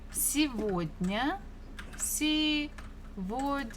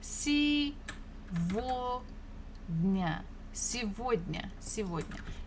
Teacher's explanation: The third letter is G, but this is a special word, so we can pronounce this G as V